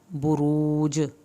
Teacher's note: با پہ ہم نے ہونٹوں کو گول کرنا ہے تاکہ ہماری پیش صحیح ادا ہو، اور جیم پہ کلکلا کرنا ہے۔